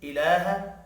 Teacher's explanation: الہ لام کے اوپر کھڑی زبر ہے، 1 الف کے برابر کھینچ کر پڑھنا ہے۔